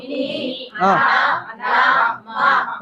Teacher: చేయరి నోరు మూసుకొని ముక్కుతో పలకాలి వస్తదా రాదు అంటే ముక్కు సహాయముతో పలుకుతాం ముక్కు సహాయముతో పలుకుతాం కాబట్టి ఈ అక్షరాలకు అనునాసికాలు అని పేరు